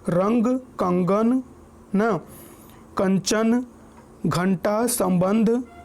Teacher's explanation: इसका प्रयोग शब्दों के ऊपर बिंदु के रूप में होता है। अनुस्वार के उच्चारण में नाक से अधिक सांस निकलती है और न या म की सी ध्वनि आती है